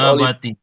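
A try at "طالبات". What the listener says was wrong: Nah, jangan lupa untuk ditanuin tolibatin gitu ya.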